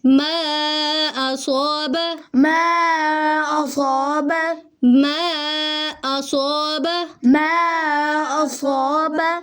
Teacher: یہ جو ما اس کو ہم لمبا کر رہے ہیں یہ ہے، یہاں پہ ہم کہیں گے مد جائز ہو رہی ہے اور اس کو 2 الف کے برابر لمبا کرنا ہے